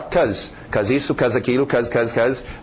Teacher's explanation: em pronúncia rápida nós vamos ver o be sumir